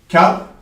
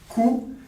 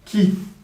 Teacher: Le kef, pour répéter, il va venir toucher le palais dur, donc l'endroit où dans notre bouche on a l'os